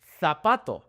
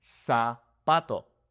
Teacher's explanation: They turn the z's and the s's oftentimes into the th sound. Whereas in Mexico we are just going to keep it as an s.